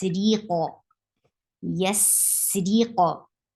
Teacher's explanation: The re sound shouldn't be dropped. Say re first and then attach with qaf, and qaf will get sifa of qalqala.